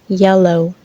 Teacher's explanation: the front of the tongue is raised up in the mouth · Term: palatal